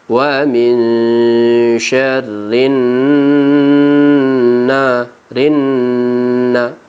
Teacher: dan wajib kita dengungkan Wani Sherlyn nah rynna waktu membaca rynna kita rasakan udara masuk rongga hidung kita dan terasa juga agak bergetar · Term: gunnah